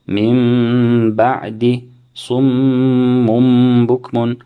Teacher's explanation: If a noon sakina or tanween is followed by a ba, iqlab will take place. In essence, the noon sakina or the tanween will be changed into a meme, as explained previously in the rules of meme sakina.